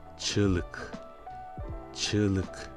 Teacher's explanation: le g avec l'accent circonflexe à l'envers est muet mais il permet l'allongement de la voyelle qui précède